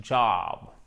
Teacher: Et c'est voyelle longue, hein? Vous ouvrez bien la bouche. Job. I'm searching, searching.